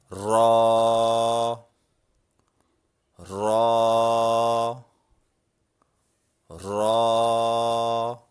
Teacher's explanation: را کو ادا کرتے وقت زبان کی نوک اوپر کے نرم تالو سے ہلکا سا ٹکراتی ہے